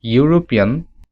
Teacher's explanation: we don't get the sound of e rather we get the sound of y you